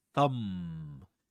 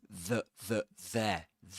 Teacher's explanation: You notice that there's no vibration in the vocal folds when you produce um the initial sound in thumb.